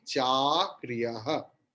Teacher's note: A is dirgha swara or prolonged long vowel